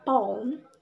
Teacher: we produce it by Rising the back of the tongue in the direction in the direction of the soft palate therefore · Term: back vowel